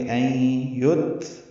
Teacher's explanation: این یترک میں این میں ادغام ناقص ہوگا، غنہ کریں گے